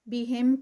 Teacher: یہ میم جو ہے ایک میم سکپ ہو کے اور آگے والے میم میں مرج ہو رہا ہے ، تو یہاں پر ادغام شفوی کا رول ہے، ادغام شفوی۔